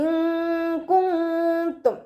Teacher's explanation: നൂൻ സാക്കിനയെ മറച്ചു വെച്ചിട്ട് മണിച്ചോതി കൊടുക്കുക കേട്ടോ. ഇൻകുന്തും, നൂനിനെ വ്യക്തമായിട്ട് കേൾപ്പിക്കരുത്.